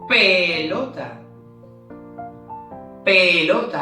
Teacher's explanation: Hay una pequeña explosión en mis labios, por lo tanto, pelota empieza con la letra P.